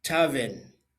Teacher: when you say tavern, there's an R there, but it's not pronounced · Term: Resh